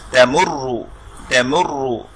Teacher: উ সাইনটা আসবে অর্থাৎ দম্মা আসবে, তখনও কিন্তু রটা মোটা হবে